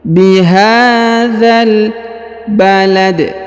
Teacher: Huruf dza langsung sambung ke alif lam qamariyah